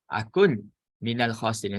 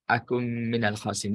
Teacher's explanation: So dia dia tak letakkan apa-apa baris pada nun dan dia letakkan syaddah pada mim adalah kerana isyarat yang menunjukkan ini berlaku proses idgham, masukkan nun di dalam mim